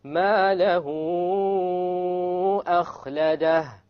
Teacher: So it is the hamza, basically, that gives the mad the strength to move up to 4 or 5. If that hamza is not there, you must bring it down to 2.